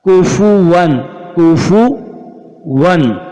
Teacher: ہم نے غنہ نہیں کیا. غنہ نہ کرنے کی وجہ آگے لر کا لام آ رہا ہے، آگے لر کا لام آ رہا ہے، آگے لر کا لام آ رہا ہے.